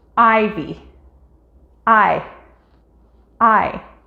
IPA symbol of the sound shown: ɑɪ